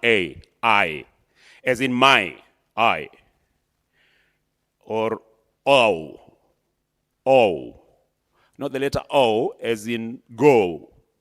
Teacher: So a diphthong perhaps what we've heard of most of us more is a gliding vowel. You know, this is a gliding vowel, meaning like two vowels sounded as one